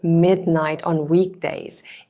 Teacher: The stress falls naturally on mid in midnight